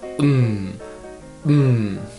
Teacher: final M sounds like mmm you can feel that your nose is vibrated there is nasal sound